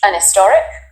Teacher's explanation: Certain accents do drop the h sound at the beginning of words. Then it would make a lot of sense to say an historic.